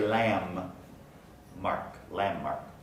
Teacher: the n undergoes place assimilation so we actually say lamb mark